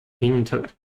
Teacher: The stress is at the first syllable